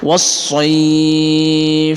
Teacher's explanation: Soy ini mad layyin, akan tapi karena berada di akhir ayat maka kita panjangkan sampai dengan maksimal 6 ketukan